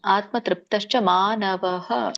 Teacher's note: ಸೊ ವಿಸರ್ಗಕ್ಕೆ ನಾವು ಉಚ್ಚಾರಣೆ ಇರುತ್ತೆ, ಆ ವಿಸರ್ಗದ ಉಚ್ಚಾರಣೆ ಹ.